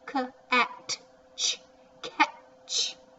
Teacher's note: you really can't hear that t a whole lot